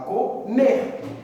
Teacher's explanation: é uma palavra oxítona porque a sílaba tônica é a última